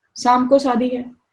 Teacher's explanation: all the words that involve sha are pronounced with sa